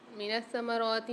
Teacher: سا کے اوپر مشدد ہے، یہاں پر سختی و جماؤ کے ساتھ پڑھیں گے۔ را کے اوپر کھڑا زبر ہے، را کو بھی ایک الف میں دار کھینچ کے پڑھیں گے۔